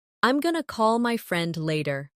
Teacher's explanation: Did you notice going to became gonna? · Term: connected speech